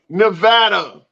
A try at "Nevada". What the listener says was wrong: it's an E, not an A, not a na. It's a ne.